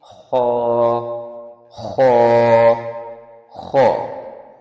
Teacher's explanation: خو کی ساؤنڈ ہلکی سی رفنس، کھردرا پن پیدا ہوتا ہے۔